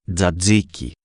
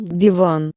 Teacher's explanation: Si on continue à se rapprocher des lèvres on arrive au palatal produite par le contact du milieu de la langue avec le milieu de la voûte c'est-à-dire le sommet du palais dur ce phonemme existe en grec comme dans dadiki et en russe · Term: occlusive palatal